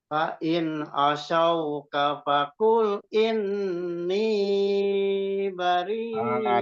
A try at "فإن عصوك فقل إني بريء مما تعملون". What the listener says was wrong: Ni-nya kepanjangan, Pak. Ni-nya kepanjangan ni-nya. Inni bari. Nah, di ininya tadi, ni-nya yang nggak boleh terlalu panjang. Karena ni-nya itu yang matobi'i. Tapi in-nya tetap gunah musaddadahnya juga jangan dikurangin.